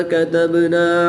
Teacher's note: با حروف کلکلہ میں سے ہے اور جب حروف کلکلہ ساکن ہو تو ان میں کلکلہ خوب ظاہر کر کے پڑھتے ہیں۔